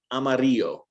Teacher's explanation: typically i teach it as a y sound amarillo because that's closer to the kind of mexican and central american accent which is what you're most likely to hear here in colorado